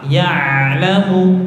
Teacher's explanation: Huruf ain itu keluarnya dari tenggorokan tengah.